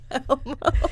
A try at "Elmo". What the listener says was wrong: You're saying Elmo. You say it like it's EWMO. Elmo.